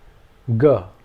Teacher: is similar to the first consonant except that in this case the vocal chords are resonated and the sound comes from deeper in the vocal chamber